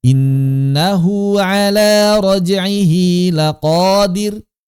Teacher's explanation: Maka setiap kita melihat hu atau hi, karena bentuknya dalam kalimat bisa hu bisa hi, enggak ada ha, enggak ada. Hu dan hi saja. Ini mesti dibaca mad, 2 harakat. Afan, innahu pakai waw kecil, raj'ihi pakai ya kecil. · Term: hak kinayah